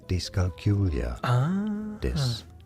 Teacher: Stress on the third syllable, on the Q syllable.